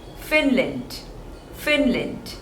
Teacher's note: there are two syllables and the stress is on the first one